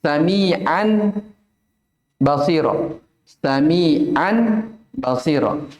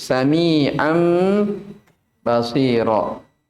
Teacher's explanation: mengganti nun sukun atau tanwinnya menjadi mim. Menjadi mim seraya didengungkan sekitar 2 harokat. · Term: iklab